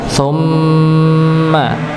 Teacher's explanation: Jadi memang keluarnya gunah itu lewat hidung ya